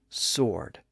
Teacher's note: situation the W sound was lost in the middle and today the standard pronunciation is sword without the W sound